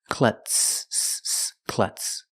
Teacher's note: The Z is not pronounced with the voiced Z sound. It's pronounced with the S sound with no voice.